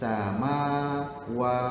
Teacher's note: So alif lam hilang, seakan-akan hilang, betul? Fis sama wa.